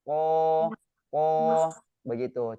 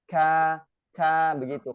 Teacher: Jadi kalau huruf ko, dia tidak ada sifat dari ada aliran nafasnya. Ko nggak ada. Tapi kalau huruf kaf ada aliran nafasnya.